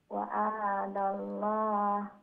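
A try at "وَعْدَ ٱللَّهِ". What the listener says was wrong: ওয়াদাল্লাহ ওয়া আইন জবর আইনে জবর না সাকিন, আইনের উপরে সাকিন, ওয়াদাল্লাহ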